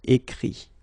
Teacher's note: Remember that phonetically this final T doesn't exist. Okay? So the sound will be only this I.